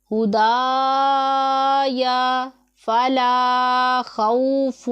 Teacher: الف سے پہلے باریک پڑھا جانے والا حرف ہے تو الف کو ہم باریک پڑھیں گے